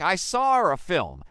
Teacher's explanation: This leads to a really interesting feature in British English called the intrusive R. Sometimes they'll add an R sound to link to words even when there's no R in the spelling